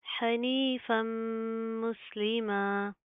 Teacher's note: यहाँ पर भी सेम क्या है, फ़ा के ऊपर दो ज़बर है, तनवीन है, उसके बाद हरूफ यरमलून में से मीम आ रहा है, शद है, तो हम गुन्ना करेंगे, नाक के अंदर साउंड पैदा करेंगे